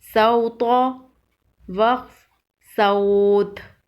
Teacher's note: وقف کی صورت میں تو پر قلقلہ کریں گے۔ تو حروف قلقلہ میں سے ہے۔